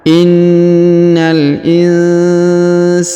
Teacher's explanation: Huruf nun sukun bertemu huruf sa maka didengungkan dan disamarkan.